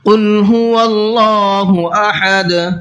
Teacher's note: قل کے قاف کو پر کر کے پڑھنا ہے، کل نہیں پڑھنا ہے۔ دیکھیے دونوں لفظوں کا فرق سمجھیے، ایک ہوتا ہے چھوٹے قاف سے کل، اور ایک ہوتا ہے بڑے قاف سے قل۔